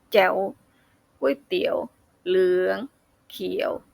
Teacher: ระดับเสียงตอนต้นเสียงต่ำตอนปลายเสียงสูงขึ้น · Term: เสียงจตวา